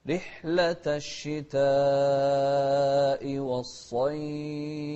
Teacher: ونوضح الفاء ونهمس فيها أيضا